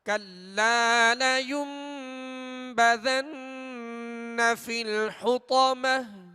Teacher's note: ہم نے کلا کے لام کو کچھ کھینچا ہے، ایک الف کی مقدار یعنی 2 حرکت کی مقدار میں ہم نے اس کو دراز کیا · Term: الف مدہ